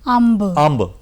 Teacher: ਦੇਖੋ ਨੱਕ ਵਿੱਚ ਵੀ ਆਵਾਜ਼ ਆ ਰਹੀ ਹੈ, ਨਾਲ ਪੱਬੇ ਨੂੰ ਵੀ ਡਬਲ ਬੋਲਿਆ ਜਾ ਰਿਹਾ ਹੈ · ਟਿੱਪੀ ਦੋਨਾਂ ਦਾ ਹੀ ਰੋਲ ਕਰ ਰਹੀ ਹੈ, ਬਿੰਦੀ ਦਾ ਵੀ ਔਰ ਅੱਧਕ ਦਾ ਵੀ। ਨੱਕ ਵਿੱਚ ਵੀ ਆਵਾਜ਼ ਨਿਕਲ ਰਹੀ ਹੈ ਔਰ ਅੱਖਰ ਤੇ ਦਬਾਅ ਵੀ ਪੈ ਰਿਹਾ ਹੈ।